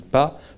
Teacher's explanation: the bilabial plosive, when you have your lips closing and you open them when doing pas